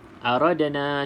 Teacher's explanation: Qalqalah Sugra sebab berada di pertengahan kalimah maka dilantunkan sedikit saja